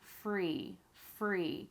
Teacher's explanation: That is the F sound. My vocal cords do not vibrate. I'm just releasing the air, blowing it out, and my teeth are right here on my bottom lip. And notice the top lip is relaxed.